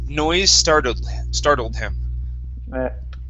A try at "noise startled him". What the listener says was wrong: Okay. Give me a D at the very end. Noise startled him.